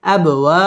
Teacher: বা কলকলার হরফ ধাক্কা দিয়ে পড়তে হবে